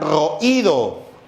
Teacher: La vocal cerrada lleva la mayor fuerza de voz, ya está tildada. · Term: hiato acentual